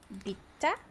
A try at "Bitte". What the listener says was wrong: Again, the first syllable is the emphasized one. Bitte.